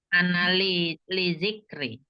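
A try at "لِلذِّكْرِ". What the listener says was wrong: Analiz tasdid ke zal. Jenisnya jadi kenapa saya koreksinya baca 3 huruf ternyata karena jenis bacaannya sama, dari teknik bacanya itu dia panjangnya juga kurang pas begitu ya.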